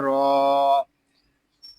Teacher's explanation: یہاں را کو پر پڑھیں گے، را کو ایک الف تک کھینچ کر بھی پڑھیں گے کیونکہ یہاں الف مدہ ہو رہا ہے، ضاد زیر دی، یہاں